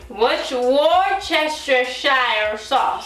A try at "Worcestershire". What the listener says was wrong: Shire. Why do you say shine? Where I'm getting the N from? Shire.